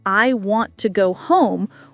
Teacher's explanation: in I want to go home, we stress want and go, and the small words like to are very quick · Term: rhythm